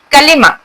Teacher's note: काफ जुबान के पिछले हिस्से और तालू से निकलती है।